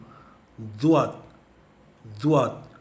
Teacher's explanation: मैं तो अपने ज़ुबान के नोक को मेरी बाइनी ऊपरी रदनक दंत पर रख कर उच्चारण कर रहा हूँ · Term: कैनाइन टीथ टंग पोजीशन